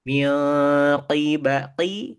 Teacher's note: nempel ke tempat ke langit-langit atas yang lunak huruf kof tuh